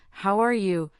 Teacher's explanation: how are you usually has a rising tone on you